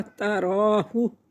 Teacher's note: रा खड़ी ज़बर, एक अलिफ के बराबर खींच कर पढ़ेंगे